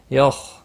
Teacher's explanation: خا پر قلقلہ نہیں ہونا چاہیے، موٹا بھی پڑھنا ہے۔